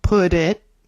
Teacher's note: when there's a consonant and then a vowel, it's linked like put it